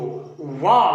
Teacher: इसी प्रकार वर्णमाला में जो वा वर्ण है ये दंतोष्ठ है, यानी निचला ओंठ जब ऊपर के दंत को स्पर्श करता है तब इसका उच्चारण होता है। इसलिए इसका उच्चारण स्थान दंतोष्ठ है।